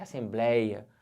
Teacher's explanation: uma palavra que é paroxítona. A sílaba forte é a penúltima.